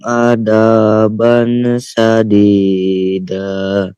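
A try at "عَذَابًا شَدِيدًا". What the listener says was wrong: Coba diperhatikan, azza pakai zal ya. Azza. Agak dikeluarkan sedikit lidahnya ya. Azza. Pakai gigi. Za, za. Azaba.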